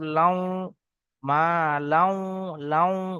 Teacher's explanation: এখানে গুণনা করার সময় ঠোঁটটা গোল মতো হয়ে যাবে।